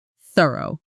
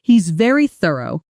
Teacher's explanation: In thorough, it's the soft one, made by placing your tongue lightly between your teeth and letting air pass through, almost like a gentle hiss, not a hard T or S sound, which is what a lot of learners substitute instead.